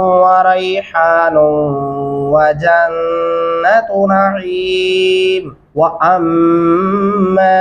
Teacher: गुना भी करेंगे और मीम के साथ दो अल्फी मद्दा भी है